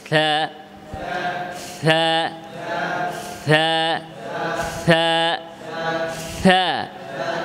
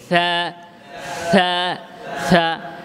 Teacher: জিহ্বার আগা সামনের উপরে দুই দাঁতের আগা থেকে থা উচ্চারণ করতে হবে, থা থা থা। এবং হরফটি বেশি লম্বা করা যাবে না, এক আলিফ দুই হারাকাত, থা, এদিকেও লক্ষ্য রাখবেন, থা।